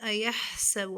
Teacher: ایحسب ہا کو اس کے مخرج سے ادا کریں گے. با کی حرکت کو کھینچیں گے نہیں